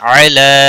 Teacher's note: لام کے اوپر کھڑی زبر ہے ایک الف کے برابر کھینچ کر پڑھیں گے